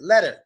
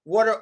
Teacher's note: A lot of times when a T sound comes before the ER, we pronounce it as a D. Like instead of waiter, instead of saying waiter, we say waiter. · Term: D sound